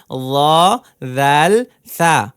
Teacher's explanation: জিহবার আগা সামনের উপরের দুই দাঁতের আগার সঙ্গে লাগিয়ে উচ্চারিত হয়